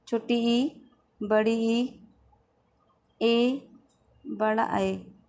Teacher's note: जिन स्वरों के उच्चारण से जिह्वा का अग्रभाग सक्रिय रहता है उन्हें अग्र स्वर कहते हैं